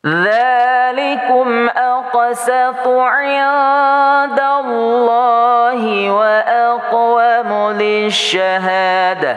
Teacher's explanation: Lafaz Allah dibaca tafkhim tebal.